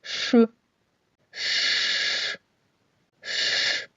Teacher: широкий кінчик язика піднімається за верхні зуби до переднього краю піднебіння під час вимови звука ш повітря зустрічає перешкоду у вигляді зубів та язика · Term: звук ш